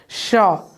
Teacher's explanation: जीभ के ठीक बीचों बीच भाग से इसका प्रोनाउंस होता है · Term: तलावी सा